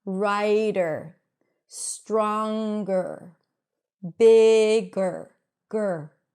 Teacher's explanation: A schwa is a very neutral vowel sound, and when it's connected to an R right after, then the R eats up the schwa, and you just hear an R. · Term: schwa R